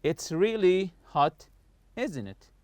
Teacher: I'm not raising my voice in the question tag here. I'm just I just want you to agree with what I say.